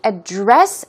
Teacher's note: the stress goes on the second syllable and it can be used as a verb. It means to deal with or discuss.